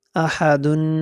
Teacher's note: یہ بعض حضرات جو ہے نا یہ حمزہ اور ہا میں فرق نہیں ہوتا ہے ان کا، ایک ہی جیسا پڑھتے ہیں، آہادن ایسے پڑھتے ہیں، آہادن، آہادن نہیں، آہادن۔ اور تنوین پہ غنہ کریں گے، دو پیش تنوین میں ہے تو اس پہ غنہ کریں گے